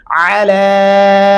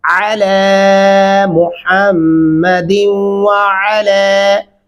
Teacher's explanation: अला अलिफ से नहीं पढ़ना, आइन गले से अदा होना चाहिए।